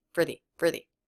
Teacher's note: this was pronounced with the E vowel not the schwa why because the next word begins with a vowel sound